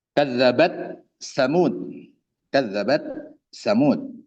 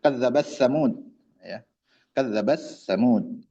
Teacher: untuk riwayat hafz dibaca izhar ya. Tapi untuk riwayat yang lain membaca dengan idgham.